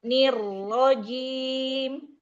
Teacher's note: Tapi nirnya mau lebih lama sedikit karena dia double roll.